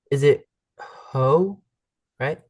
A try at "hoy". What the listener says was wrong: You don't pronounce the H ever. Hoy, hoy,